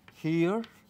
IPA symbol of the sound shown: hi